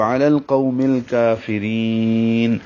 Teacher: علی القوم الکافرین میں عین وسط حلق سے ہے